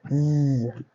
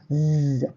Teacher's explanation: when you're pronouncing the zzz, there's a vibration on your vocal tract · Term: voiced